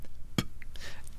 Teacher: It's what we call a bilabial ejective sound. You make it by closing your lips together, closing your vocal folds, and then lifting your larynx to pump air out of the mouth. It's similar to an English P, as in potato, except that in the P in potato, you are pumping air from your lungs instead of from your larynx moving up.